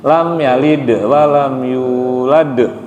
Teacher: Lam yalid, lidnya itu pantulannya tipis. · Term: qalqalah